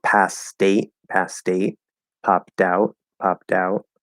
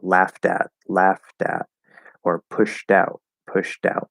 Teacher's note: weak d after the consonant that will connect to a vowel